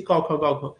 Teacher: স্নিগ্ধ তালব্য বা কন্ঠধ্বনি। অর্থাৎ জীভের একেবারে পেছনের অংশ এবং ওপরে তালুর যে নরম অংশ বা স্নিগ্ধ তালু যেটাকে বলা হয়েছে সেই অংশে আঘাতটা হচ্ছে